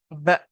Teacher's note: ساکن ہے، تو ساکن کو کیا کرنا ہے، جھٹکا دے کر پڑھنا ہے